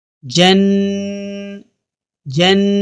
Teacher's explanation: نون مشدد پر ہم 1 الف کے برابر غنہ کرتے ہیں